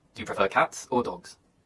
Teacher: in contrasting questions the intonation Rises then Falls